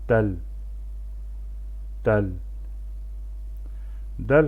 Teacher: Bu hərf dilin ucunu yuxarı kəsici dişlərin kökünə toxundurmaqla və ya üstön dişlərin dibinə toxundurmaqla və hava axınını dayandıraraq tələffüz edilir. Azərbaycan dilində olan D səsinin tamamilə oxşarı və incə formasıdır. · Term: dəl hərfi